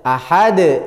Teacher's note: nah ini juga Hamzah Ahad nah di dalam dalam lafaz Ahad ada qolqalah Kubro di situ dalnya harus mantul jadi ee qolqalah di sini disebut dengan qolqalah Kubro atau harus